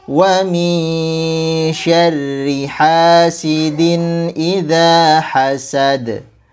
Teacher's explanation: Nah, di sini sama nun sukun bertemu dengan shin, hukumnya ikhfa 2 harokat. Kemudian huruf ra-nya dibaca tipis karena dia berharokat kasrah. Kemudian dikata hasidin idza, ada tanwin bertemu dengan hamzah, maka hukumnya adalah izhar.